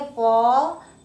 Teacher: च के साथ ही अ का भी उच्चारण हो रहा है।